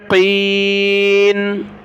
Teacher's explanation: قاف کو موٹا کریں